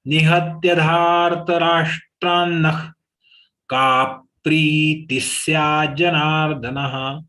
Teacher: Ka is long, pri is long, sya is long, na is long.